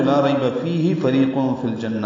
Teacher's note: فریق میں را باریک ہے، ری یا مدہ ہے